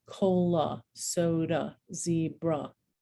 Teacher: when a word ends in a letter a it's going to be pronounced uh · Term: schwa sound